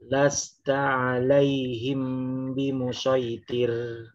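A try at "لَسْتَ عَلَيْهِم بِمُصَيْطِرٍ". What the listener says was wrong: Jangan bimusya. Ujung lidahnya turun ke bawah. Bimusaitir. Iya, jangan iya, jangan syaitir. Iya, sayyitir. Hati-hati jadi sya ya.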